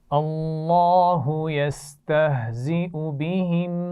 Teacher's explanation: یستہزئ میں حمزہ کے اوپر پیش موجود ہے، تو یہاں پر یا نہیں پڑھی جائے گی بلکہ حمزہ کی آواز پڑھی جائے گی